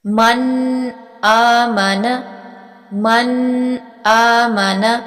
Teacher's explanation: غنہ کیے بغیر نون کی آواز کو ظاہر کیا جاتا ہے۔ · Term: اظہار